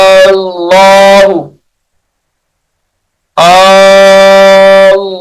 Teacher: ये इसमें जलालत अल्लाह का लाम है, पुर भी किया जाएगा